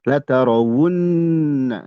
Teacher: ini wunna dibaca gunnah.